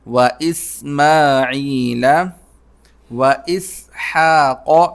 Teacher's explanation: ہا کو حلق سے نکالنا ہے اور قوف موٹا ہوگا سین کو سیٹی کے ساتھ.